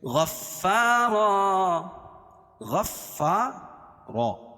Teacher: غین کو فا میں سختی کے ساتھ ملائیں گے کیونکہ فا کے اوپر تشدید ہے، تشدید والحرف سختی کے ساتھ پڑھا جاتا ہے.